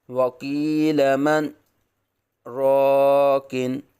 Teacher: یہ وقف جو ہوا ہے یہ راک میں کیا ہے، من اور راک کے درمیان سکتہ ہی کیا ہے، یعنی صرف آواز روکی ہے، سانس جاری رکھا ہے